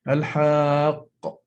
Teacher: You don't really realize that there is a sukun, but when you produce it, you're in fact making 2 qaf sounds merged together with the shadda